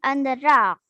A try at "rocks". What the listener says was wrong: Rocks. nhớ phát âm chữ S nha.